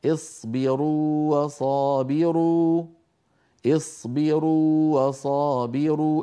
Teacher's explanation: والواو الاولى مديه لابد من اعطائها حقها من التطويل والمط الطبيعي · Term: حرف مد